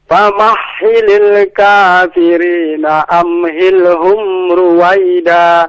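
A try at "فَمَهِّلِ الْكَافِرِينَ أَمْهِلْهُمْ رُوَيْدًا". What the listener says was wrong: Iya, famahhilil dengan ha ya, yang dari pangkal tenggorokan. Famahhilil bukan dari tengah.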